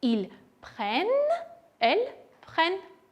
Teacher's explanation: ուզում եմ շեշտադրել ils prennent եւ elles prennent ունենք երկու n։ Արտասանության ժամանակ փորձեք այնպես անել, որ զգացվի այդ n-երի կրկնությունը